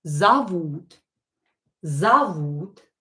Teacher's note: О, not stress, pronounce it as а.